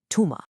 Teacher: In formal classical Arabic, that first letter makes a th sound. But in everyday spoken Darija, nah, it almost always softens to a simple t sound.